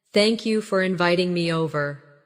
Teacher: Notice how inviting me over flows as one smooth phrase.